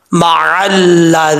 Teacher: ज़ाल जो है बगैर सिटी के पढ़ा जाएगा और इसका मखरज है जुबान का सिरा ऊपर वाले दांतों के अंदरूनी किनारे से लगे तो ज़ाल पढ़ा जाता है। ज़ाल मअल्लज़ीना, या मद्दा है एक अलिफ की मकदार लंबा करके पढ़ेंगे।